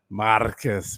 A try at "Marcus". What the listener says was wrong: Why you roll your tongue so weird, bro? You're adding extra.